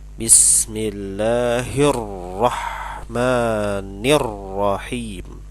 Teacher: antara huruf nun ni ke huruf ra ada tasydid. Harus ditekan terlebih dahulu.